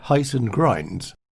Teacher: the posh pronunciation of house and grounds sounding more like heist and grinds